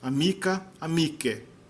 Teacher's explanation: o C tem que ser trocado por CH para manter o som duro, velar, oclusivo.